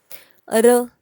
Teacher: अहम मूर्धन्य, कारण त्याचं ज्यावेळेस आपण ट ठ ड ढ न म्हणतो तिथेच आपली जीभ र ला पण टेकते, म्हणून याचं उच्चारण स्थान याचं उच्चारण स्थान मूर्धन्य झालं.